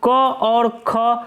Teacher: क और ख कंठ ध्वनियाँ हैं